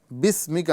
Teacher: بسمکا، یہاں پر سین جو ہے ساکن ہے، اس کو بسمکا یہاں پر سین کی آواز سیٹی کے ساتھ ادا کریں گے